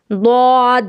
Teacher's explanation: استطالت، یہ ضد ضاد معجمہ کی ہے، یہ صفت ضاد معجمہ کی ہے۔ اس کے ادا میں شروع مخرج سے آخر مخرج تک بتدریج آواز نکلنی چاہیے، یعنی آواز جو دھیرے دھیرے آنی چاہیے۔